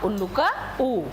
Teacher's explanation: पूर्ण वृत्ताकार यानी कि हमारे लिए होठ पूरा गोल हो जाता है। पूर्ण वृत्ताकार में क्या आता है आपका उल्लू का ऊ।